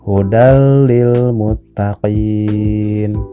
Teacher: Contoh lain seperti hudal lil muttaqin. Bunyi N-nya dimasukkan ke huruf lam. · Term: idgham